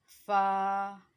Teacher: फा हमारे जो ऊपर वाले दांत हैं उसका जो किनारा है वो नीचे वाले होंठों के तरी वाले हिस्से से जाके टच करेगा तो वहाँ से फा अदा होगा।